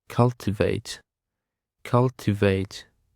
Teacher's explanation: Cultivate is 3 syllables, and the stress is on the first syllable.